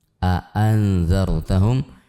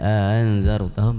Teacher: A'anzartahum 2 hamzah yang bersambung itu harus dibaca dengan jelas. Tahqiqul hamzah di dalam kaidah membaca Al-Qur'an sebutkan tahqiqul hamzah.